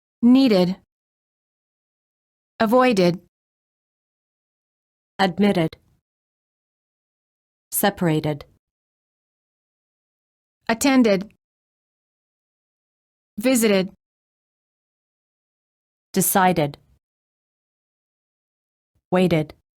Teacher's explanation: If the last letter of the word is spelled with a D or a T, the ED is pronounced as a separate syllable, id.